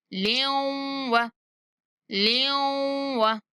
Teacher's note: جب لام کی تنوین کو واو کے ساتھ ملائیں گے تب بھی ہم نے غنہ کے ساتھ ملانا ہے